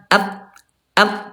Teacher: huruf ta ada di pangkal gigi di atas